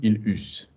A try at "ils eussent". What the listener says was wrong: Nous eussions, vous eussiez, ils eussent. It's still a vowel. You've got to have the link.